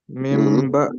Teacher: تو اس لیے کیونکہ اس میں ہم بدل دیتے ہیں نون ساکن و تنوین کو میم سے، اور پھر اس کے بعد گنا کرتے ہیں۔ · نون ساکن کے بعد با آ جائے تو اس نون کو جو ہے وہ میم سے بدل دیں گے، تو اس کو پڑھیں گے میم با دی۔ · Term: اقلاب